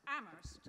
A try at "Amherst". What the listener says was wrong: you always drop the H.